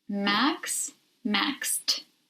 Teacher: although max ends with an x it has the sound of an s so we follow the rule to give the e d a t sound